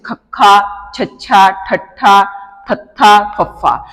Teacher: ਇਹਨਾਂ ਨੂੰ ਉਚਾਰਨ ਕਰਨ ਸਮੇਂ ਸਾਹ ਦੀ ਹਵਾ ਵੱਧ ਮਾਤਰਾ ਦੇ ਵਿੱਚ ਛੱਡੀ ਜਾਂਦੀ ਹੈ। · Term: ਮਹਾਪ੍ਰਾਣ ਧੁਨੀਆ